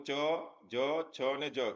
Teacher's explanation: જે વ્યંજન આપણે બોલીએ આપણા તાળવામાંથી જે બોલાય એને તાલવ્ય ધ્વનિજૂથ આપણે કહીશું